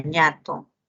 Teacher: Luego tiene la N, el fonema es el fonema nasal, nasal alveolar sonoro, en la palabra nata, la letra N. La ñ, que también es una nasal, nasal palatal, sonoro